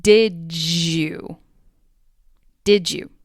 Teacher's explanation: When a D sound and a Y sound are back to back, they create the sound J. · The final D sound in did gets blended with the initial Y sound in you to sound like did you. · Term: assimilation